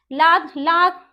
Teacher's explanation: हमारी जो जीभ है उसके दोनों साइड से हवा निकलती है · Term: पार्श्विक